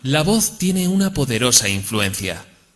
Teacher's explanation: le va a escuchar básicamente para intentar conseguir modificar esa monotonía vamos a intentar comenzar la frase en un tono agudo y acabar en grave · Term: entonación